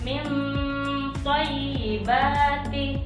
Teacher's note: Ikhfa a'la masa dengungnya lebih lama daripada ikhfa awsat dan ikhfa adna.